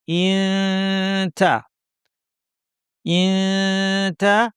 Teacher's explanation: তা এর মাখরাজের কাছাকাছি জিহ্বা নিয়ে আমরা নাক থেকে গুণনা করব। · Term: ইখফার সঠিক আওয়াজ